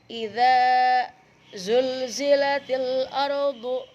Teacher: Alif lam qamariyah. Dibacanya jelas alif lamnya.